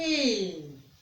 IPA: i: